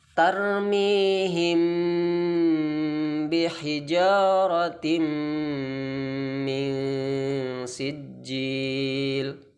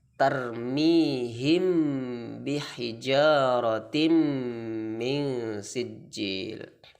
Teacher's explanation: Harus samar-samar di bibir dan didengungkan. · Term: ikhfa syafawi